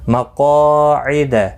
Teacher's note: مقاعد قاف مستعلیہ ہے، پر پڑھنا ہے